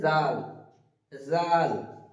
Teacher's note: জাল উচ্চারণ করার সময় আমরা খেয়াল রাখব জালটা হবে একটু তুতলাম জিবের আগা সামনের দাঁতের সঙ্গে লাগিয়ে উচ্চারিত হবে